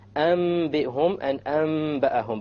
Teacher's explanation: You convert the noon to the meme with a gunna. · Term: iqlab